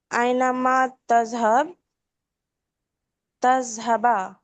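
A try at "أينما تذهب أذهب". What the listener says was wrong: ऐनमा तज़हब, तज़हब ठीक है, तज़हबा नहीं, ऐनमा तज़हब।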